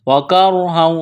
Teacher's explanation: را ساکن سے پہلے زبر ہے، را کو موٹا کرنا ہے، یہاں غنہ کریں گے، آواز ناک میں چھپائیں گے۔